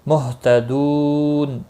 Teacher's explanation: دو واو مدہ ہے، اس کو ایک الف کے برابر کھینچ کر پڑھیں گے۔ نون وقف کی صورت میں نون ساکن پڑھا جائے گا، وقبل اسکان ہوگا، 3 سے 5 الف کے برابر کھینچ کر وقف کریں گے۔